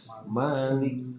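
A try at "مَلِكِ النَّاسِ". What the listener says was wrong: masih panjang. Dipendekin lagi. Masih panjang. Masih kegusur. Ya, tapi tadinya panjang. Malikin nun bertasnya panjang.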